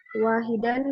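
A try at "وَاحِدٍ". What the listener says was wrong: Mana bacanya wahidan? Ada alifnya nggak di belakang dan?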